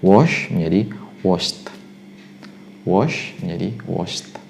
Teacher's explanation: Anda ucapkan juga sebagai at atau seperti suara t di belakangnya